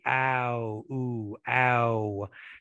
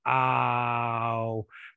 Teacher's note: we start out with more of an open ow ow but then once we go to the ooh we have to round the lips